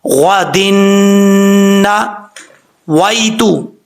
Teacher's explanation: یہاں پہ دال کے نیچے دو زیر ہے، ادغام یرملون ہوگا، دو زیر کی تنوین کے بعد نون آ رہا ہے حروف یرملون میں سے، اس لیے یہاں پہ ایک الف کی مقدار غنہ بھی کیا جائے گا